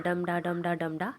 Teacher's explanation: जैसे डम डा, डम अनस्ट्रेस है, डा में स्ट्रेस है